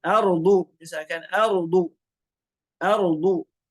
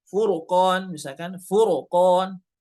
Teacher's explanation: Ra sukun sebelumnya fathah atau ra sukun sebelumnya dhammah. Ini dibaca tebal.